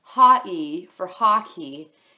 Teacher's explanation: he started to say the first and last syllable, but leave the middle syllable out